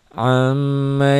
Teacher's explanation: Gun gunah tuh ya am ee gunah itu dia ditahan dengung ke hidung Ya ditahan ada panjangnya satu Alif sampai satu Alif setengah atau dua sampai tiga harakat dua sampai tiga ketukan itu gunah